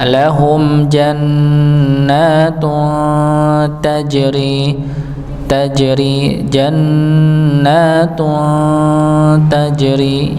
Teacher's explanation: Berikutnya pada kata jannatun, ya taknya dengan tanwin, dhammah tanwin bertemu dengan huruf ta maka disamarkan, ya dan ditahan, ya. Lahum jannatun tajri jannatun tajri, ya disamarkan karena dhammah tanwin bertemu dengan huruf ta, ya.